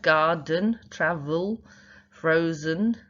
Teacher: the second syllable there is unstressed, and the E is making the schwa sound.